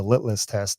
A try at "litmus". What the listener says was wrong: There's an M in there. Litmus.